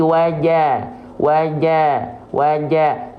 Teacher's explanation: Jim enggak boleh bocor becek nafas karena sifatnya adalah jahar ya tertahan nafasnya